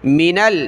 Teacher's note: میم زیر می نون کو لام کے ساتھ ملایا